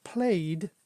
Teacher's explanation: it's just pronounced simply as a d, so we don't have the e on it